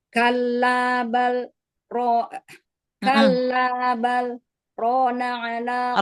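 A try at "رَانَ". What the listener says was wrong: Rona selesaikan matobi'i pada ro-nya. Saktahnya sudah bagus tadi, lebih cepat sedikit, tapi ro-nya matobi'inya diselesaikan.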